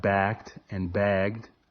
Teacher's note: In words like backed and bagged, the first consonant sound, the ka and ga respectively, often isn't pronounced as strongly as the second. This means the little puff of air you typically hear with these consonants, called plosion, is almost inaudible.